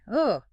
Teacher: It's a schwa sound. It's a very short, very neutral, It comes right from the throat. Almost lazy.